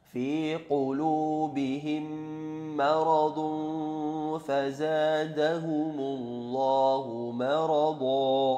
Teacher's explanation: ada mim mati bertemu dengan mim tasydid yang biasa dinamakan idgham mutamathilain, ya, atau idgham mimmi, ya, mendengung panjangnya 2 harokat